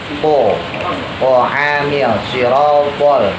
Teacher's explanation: Kalau to lebih monyong, jadi giginya agak ketutup.